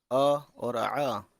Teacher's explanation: عین کی آواز تھوڑا حلق سے ہو کے آتی ہے